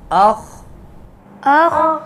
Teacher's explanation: حمزہ خا زبر اخ، حمزہ خا زبر اخ۔ خا یہ پر حرف ہے، موٹا ہے، اس کو موٹا ادا کریں گے، قلقلہ نہیں کریں گے۔